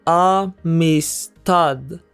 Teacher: The last syllable is stressed.